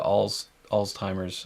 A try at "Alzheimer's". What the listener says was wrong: Nope, Alzheimer's, but close enough. There's no T in there.